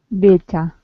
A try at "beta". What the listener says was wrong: Beta. So you're saying it as though it's an E. I want you to say it as though it's an A. Beta. You want to say the word as though it's spelled this way.